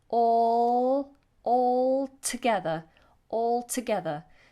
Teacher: we do pronounce this L all together even though it might sound like we don't we do the tongue tip touches the roof of the mouth